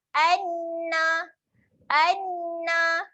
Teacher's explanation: Kalau sabdu ni kita kena doublekan bunyi huruf nun. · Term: bacaan sabdu